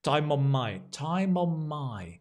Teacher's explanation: the n and the n on my becomes one sound